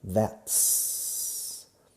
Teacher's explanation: Sin embargo, cuando hablamos en inglés hacemos la contracción aquí, contrayendo la T junto con la S de is, eliminando la I. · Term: sonido de TS